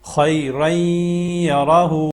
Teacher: خیرین ناک میں آواز لے کے جانی ہے، اس کو اس طریقے سے پڑھنا ہے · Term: غنہ